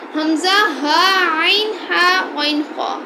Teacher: ان کو حلق سے ادا کرنا ہے، وہ حروف حلقی 6 ہیں، حمزہ، ہا، عین، ہا، غین، خا۔